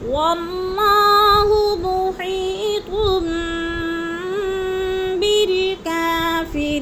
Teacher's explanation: کافری پہ یا مدہ ہے، اس کو بھی ہم نے 1 الف 2 حرکات کے برابر لمبا کر کے پڑھنا ہے